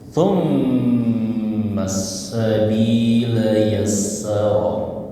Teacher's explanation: langsung ke huruf sin ya, jangan panjang-panjang thummanya ya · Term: alif lam samsia